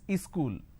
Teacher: wherever there is a word that starts with the S sound they add a e in front so instead of saying school they say is school something like